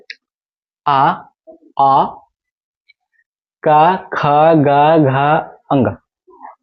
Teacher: इसका उच्चारण स्थान कहां है कंठ है कहां कंठ इसलिए इसको बोलते हैं कंठ वर्ण